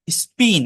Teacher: আবার বলছি এস এর পরে বসে। মানে পিটি কে এর আগে যদি এস থাকে তাহলে সেটা নন এসপিরেটেড হয়